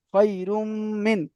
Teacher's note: তানবিনকে মিমের সাথে মিলিয়ে এক আলিফ পরিমাণ গুণনা সহ পড়তে হবে। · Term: ঈদগামে নাকিস